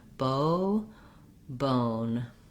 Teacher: Then in the word bone, the thing to watch out for is the O is a diphthong in American English. So just make sure you're holding it longer.